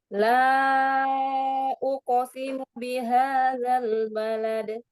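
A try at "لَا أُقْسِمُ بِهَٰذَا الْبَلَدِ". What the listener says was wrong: Jelaskan mu-nya jelaskan. Sekali lagi.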